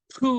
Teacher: 푸 하면은 입술이 벌어지면서 양옆으로 바람이 푹 나가요. 그래서 요 앞으로 나가던 것이 이제는 옆으로 퍼져서 푸 하고 발음이 쫙 나가버리니까 획을 또 하나 더했죠.